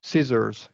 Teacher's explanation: We're going to stress the first syllable.